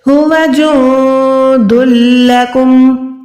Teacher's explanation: آواز کو ناک میں ہرگز نہیں لے جانا. دلکم صرف منہ سے ادا کرنا ہے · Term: ادغام